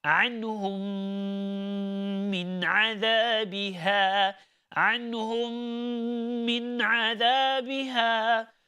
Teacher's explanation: you need to make sure that you are doing the ghunnah. Okay, because there is a mim sakina followed by the letter mim. Mim sakina followed by the letter mim.